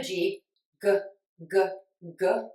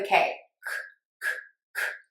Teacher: We say a K and a G sound with the tip of the tongue down and the back of the tongue pulled high up. The difference is your voice box. Voicing is on for the G, G, G, G, and it's off for the K, K, K, K. So that means our voice box is on and moving for the G, G, G, G, and it's off for the K, K, K, K.